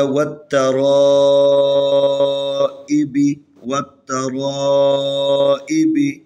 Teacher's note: را کو بھی تفخیم پڑھنا ہے، موٹا کرنا ہے، کیونکہ را کے اوپر زبر ہے